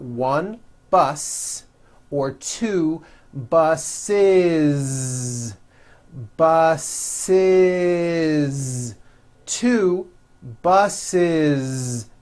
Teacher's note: if you make it plural you're going to add the ending is with a voiced Z · The last sound you hear is that voiced Z.